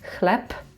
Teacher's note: because b is at the end of the word, we say p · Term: voiceless